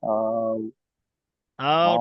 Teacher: এটা ওয়াও লিন, লিন মানে টান হবে না। যদি এখানে ওয়াও ডান, ওয়াও সাকিনের ডান দিকে যদি পেশ থাকতো তাহলে টান হতো, কারণ ওয়াও মাদ্দা হয়ে যেত।